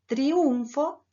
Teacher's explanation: en triunfo, la U tiene mayor carga, cumple la función de núcleo silábico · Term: diptongos homogéneos